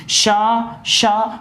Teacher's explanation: इसके बाद देखिए शा, बिल्कुल आवाज आपकी हवा निकलती जा रही, मात्र हवा निकल रही, लेकिन स्वर तंत्रियों में आपको ऐसा नहीं लग रहा है, बिल्कुल आराम से घिसावट के साथ ऊष्म या गर्म हवा निकल रही है, लेकिन आपको ऐसा नहीं लग रहा है कि हमारे स्वर तंत्रियों में कोई कंपन हो रहा है।